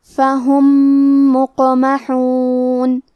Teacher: الاذقانی، کلمت فہم کے آخری میں میم ساکن ہے، پھر حرف المیم ہے کلمت مقمحون، یہاں حکم ہے ادغام متماثلین صغیر، ہم پہلے میم کو دوسرے میم میں ملا کے ایک ہی میم غنہ اور تشدید کے ساتھ پڑھیں گے